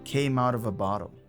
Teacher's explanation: And so it linked to the next word, of, out of. And finally, the word of got linked to a, or as it's pronounced here, ah. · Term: connected